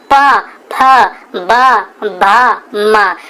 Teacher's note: आपके जो होठ होंगे ना दोनों चिपकेंगे फिर खुलेंगे, चिपकेंगे खुलेंगे, इसलिए इनको ओष्ठ कहा जाता है।